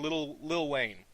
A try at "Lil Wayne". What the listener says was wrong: Correction. It's Little Wayne, not Little Wang. Get that shit straight. said Wang. You said Wang. It sounded like Wang.